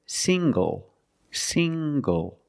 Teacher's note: The ng makes the nasal sound plus the hard g.